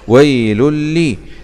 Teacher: ضمتين مع الإدغام بغنة في اللام المشددة